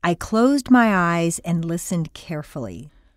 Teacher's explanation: there are no blanks between the words and there is a continuous hum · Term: the underlying hum